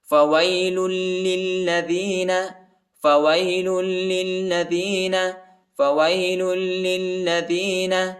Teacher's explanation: فَوَيْلٌ لِلَّذِينَ يَكْتُبُونَ الْكِتَابَ بِأَيْدِيهِمْ لام کو پہلے والے لام کے ساتھ ملائیں گے اور پہلے والے لام کو دوسرے لام کے ساتھ ملائیں گے، دونوں لام پر جو ہے شد آیا ہے، دونوں کو سختی کے ساتھ شدت کے ساتھ پڑھیں گے